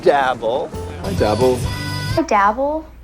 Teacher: come off like a showoff when people use dabble like this they often use a rising uncertain intonation that almost sounds like a question